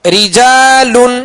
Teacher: اس را کے نیچے بھی زیر ہے، لہذا اس را کو باریک پڑھیں گے